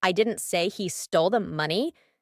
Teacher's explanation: with emphasis on he I'm implying someone else might have done it